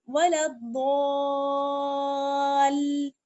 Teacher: ضاد کو کھینچتے ہوئے آپ کو لام سے ملانا ہے